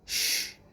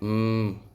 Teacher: Now, usually, these are like an open door. The cords are far apart, so air passes through quietly without any obstruction. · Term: voiceless sounds